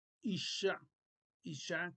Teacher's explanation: es un dagesh fuerte, o sea que duplica la consonante nada más.